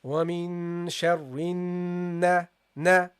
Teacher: because the noon has a shadda, this means that you have to hold it also longer